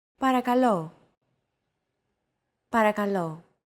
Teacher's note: to English don't forget that words get accentuated in Greek so make sure to stress that final syllable with the accent mark